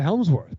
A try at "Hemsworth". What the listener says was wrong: Helmsworth. Hems. Hemsworth.